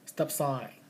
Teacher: the next word beginning with consonant, we don't release the stop